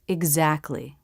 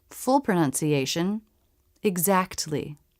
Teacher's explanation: This word has the K, T, L consonants together, but most people pronounce it without the T.